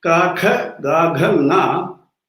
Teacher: in that kavarga, the sound comes from the throat